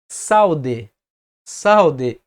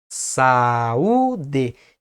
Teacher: tanto a vogal a quanto a vogal u são pronunciadas de forma mais expressiva então cada emissão de voz fica em uma sílaba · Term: hiato